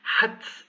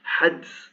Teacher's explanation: you almost hear a t hats instead of hads